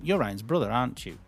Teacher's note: when we use question tags just for chatting a conversation, the intonation falls.